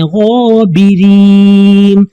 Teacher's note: یہاں پہ رو کے نیچے زیر ہے تو رو باریک پڑھیں